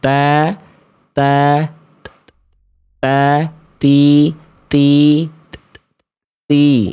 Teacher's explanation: huruf ta salah satu sifatnya dari segi udara itu terpercik nafas. Ada nafas yang berhembus.